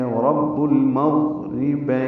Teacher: وقف پہ روم کریں گے تو ہلکا سا منہ یا اس کی شیپ جو ہے وہ زیر کی جانب یعنی نیچے کی جانب مائل کر لیں گے تو وقف پہ روم ہو جائے گا، اور ملانے کی صورت میں نون کے نیچے زیر ہے، جلدی اور معروف طریقے سے پڑھیں گے، پھر اگلی آیت اسی سانس میں پڑھنی ہوگی۔